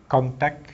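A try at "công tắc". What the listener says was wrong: No final consonant sound.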